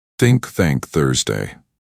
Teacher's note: he gently bit his tongue and blew air out